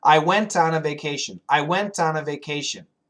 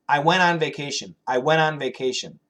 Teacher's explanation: as you speak English naturally, the T will probably be canceled.